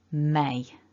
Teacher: got to be vibration in the nose for that and then we've got one of those double vowels so it's a bit of a shift of mouth shape · we need to bring both lips together and there's got to be vibration in the nose